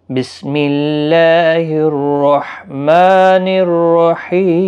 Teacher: ہا کا خاص خیال رکھیں، وسط حلق والا ہے، میم کے اوپر بھی کھڑا زبر ہے، 1 الف کی مقدار کے برابر کھینچیں گے۔